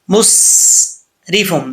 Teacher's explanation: مسرفم، یہاں پر سین ہے، سین کے اوپر جو ہے وہ جزم ہے، یہاں قلقلہ نہیں، اکثر لوگ غلط پڑھ جاتے ہیں، قلقلہ کر جاتے ہیں، ایسا نہیں کرنا، مسرفم نہیں پڑھنا، مسرفم، سین میں سیٹی بھی ہے، مسرفم۔